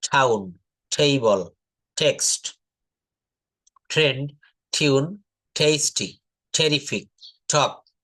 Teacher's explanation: টি এর উচ্চারণ ট না হয়ে ঠ এর মতো উচ্চারণ করতে হবে